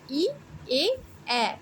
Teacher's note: আবার জিহ্বার এগোনো পিছনে, মানে সামনের দিকে ঠোঁটের দিকে আসার কিছু সময় আছে, সেটা হচ্ছে যে এ উচ্চারণ করো, দেখো জিভটা সম্মুখ দিকে এগিয়ে আসবে